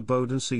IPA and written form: ˈboːdn̩ˌzeː (Bodensee)